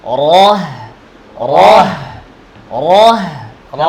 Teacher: র উপরে হা নিচে খেয়াল করতে হবে কিভাবে বলতেছি রহ না র এর মোটা আওয়াজ উপরে হায়ের আওয়াজ বাতাস নিচে